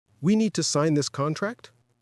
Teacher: It is technically known as high-rising terminal. This is the habit of ending a declarative sentence with a rising intonation, making it sound like a question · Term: upspeak